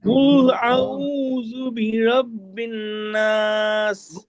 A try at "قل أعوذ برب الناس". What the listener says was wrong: গুণনাটা একটু করতে হবে। কুল আউযু বিরাব্বিন নাস।